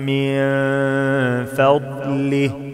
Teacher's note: ما عملش قلقلة في الضاد